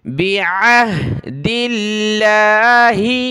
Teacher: عین کو ہا کے ساتھ ملائے، عین کی آواز آئے پھر ہا کی